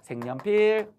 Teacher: 여니까 이어 할 때 그 이, 그게 반모미잖아요. 그럼 앞말이 자음, 뒷말이 반모음 이가 있으니까 그 반모음 이 부분에 니은이 첨가됩니다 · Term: 니은 첨가